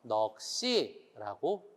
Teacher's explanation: 넉이라는 말 이가 오니까 아까 넉으로 발음해서 넉이 이렇게 하나죠. 넉시 시옷을 뒤로 보내서 넉시라고 발음을 하죠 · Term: 연음